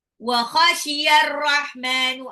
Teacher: alif lam ketemu ra, alif lamnya tidak dibaca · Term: alif lam samsiyah